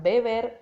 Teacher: la consonante que está ubicada en segundo plano de la palabra beber se convierte en una fricativa bilabial sonora, ya que no se detiene el flujo o salida de aire. Por lo tanto, no hay obstrucción alguna, como en la primera B, dentro de la misma palabra, que es una oclusiva bilabial sonora, en la cual al articularla se detiene por un momento el flujo de aire y luego se libera.